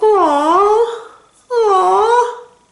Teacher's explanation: It's more like a song, and you're stressing it out, and it goes up.